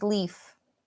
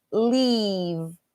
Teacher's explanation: the only difference between the F and the V is using your voice box